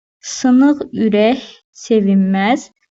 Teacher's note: Ürək sözündəki k xüsüri kimi tələffüz olunacaq. Sevinmə sözündə N samiti m samitinə keçəcək.